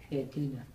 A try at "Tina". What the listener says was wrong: No. Tina, ale nie Dina, ale Tina.